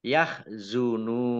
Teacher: Yahzunun, nun domah wawu sukun, mat tobi'i, tetapi karena bertemu dengan huruf terakhir yang dibaca sukun karena wakof, maka menjadi mat ariz lis sukun. Dibaca panjang boleh 6, 4 atau 2 harokat.